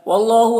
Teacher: अल्लाह को पुर पढ़ेंगे, खड़ा ज़बर है, एक अलिफ के बराबर खींचेंगे। लाम अलिफ मद्दा इसे एक अलिफ के बराबर खींचेंगे।